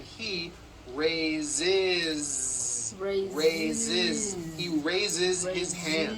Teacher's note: Raise. So we say I raise with a voiced Z ending, and he raises.